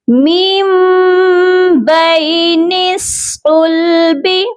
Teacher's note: اقلاب کا مطلب ہوتا ہے بدلنا. یہاں پر ہم نون کی آواز کو میم میں بدلیں گے